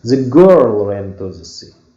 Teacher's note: I'm stressing the word girl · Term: main stress